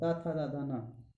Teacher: जब जीभ आपकी ऊपर लगती है, दांतों के पास लगेगी, तो उसको दंत बोलते हैं